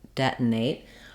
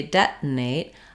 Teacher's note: up as though I'm going to make the T debt but I don't let the air release there's no burst of Air instead I move right into the n Sound